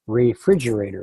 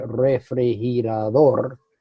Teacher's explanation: we put our accent at the beginning, they put their accent at the end. And actually, the pronunciation, it starts with the last syllable going back.